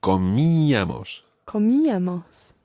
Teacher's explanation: The stress is on the I. So comíamos.